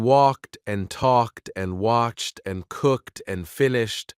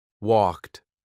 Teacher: In walked and talked and watched and cooked and finished, the ed sounds like a soft t.